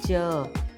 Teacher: तो हमारा टंग है ना ऊपर की तरफ टच हो रहा है, तो यह है तालव्य